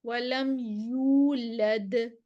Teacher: پلٹے گی، حروف قلقلہ میں سے ہے، لم یلد ولم یولد، واو سے پہلے پیش 2 کاؤنٹس دیں گے، یو کو لمبا کریں گے